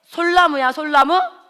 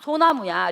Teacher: 솔과 나무가 합쳐질 때 솔나무야, 솔나무? 아니야. 소나무야. 리을이 없어져 버려. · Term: 리을 탈락